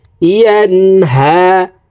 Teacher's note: নুন সাকিনের পর ইজহারের হরফ হা আসছে, এই কারণে এই নুন সাকিনকে গুন্না ছাড়া স্পষ্ট করিয়া পড়তে হবে